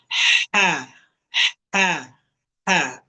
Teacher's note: Kalau ha tipis udara dulu yang keluar.